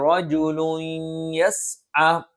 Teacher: മറിച്ച് മിൻ അഖ്സൽ മദീനതി റജുലുൻ യസ്അ, തൻവീനു ശേഷം യാ വന്നു, തൻവീനു ശേഷം യാ വന്നാൽ ഇദ്ഗാമും ബിഗുന്നയാണ്. റജുലുൻ യസ്അ മണിക്കുകയും വേണം, ശേഷമുള്ള അക്ഷരത്തിലേക്ക് യായിലേക്ക് തൻവീനിനെ ചേർത്തോതുകയും വേണം.